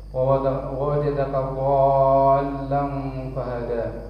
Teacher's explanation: Mad lazim mustaqal kalimi, harus 6 harokat, harus panjang. Wa wajadaka dhallan fahada, agak diayun.